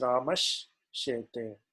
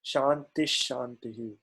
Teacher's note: So both of these combine, and in the place of sakara you get the shakara adesha. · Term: Shutva Sandhi